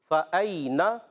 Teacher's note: یا ساکن سے پہلے زبر ہے، یالین ہوگا، نرمی سے ادا کریں گے، نون پر زبر ہے، فَأَيْنَ یہاں نون کی زبر کو کھینچنا نہیں ہے۔